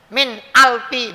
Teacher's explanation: nun mati ketemu hamzah, ini berarti izhar, bacanya harus jelas gitu